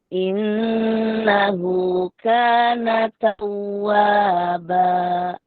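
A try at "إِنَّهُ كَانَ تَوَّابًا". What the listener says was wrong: Lewat dari dua. Innahu kana tawwaba. Dua harokat sama ya.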